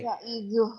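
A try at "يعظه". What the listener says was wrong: Wa huwa ya'idhuh. Pendek ada yang panjangin. Nunya pendek. Wa iz qala Luqmanu libnihi wa huwa ya'idhuh.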